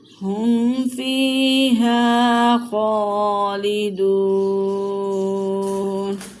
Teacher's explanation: خا کو کھینچ کے پڑھیں گے، کھڑی حرکات ہے، اور دال کو کھینچ کے پڑھیں گے کہ یہاں پہ واو مدہ ہے